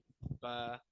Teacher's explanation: बा कहाँ से अदा होता है? दोनों होठों के तर हिस्से से। बा, दोनों होठों का तर हिस्सा, जब होठों को थोड़ा दबा के मिलाएंगे तो तर हिस्सा मिलेगा।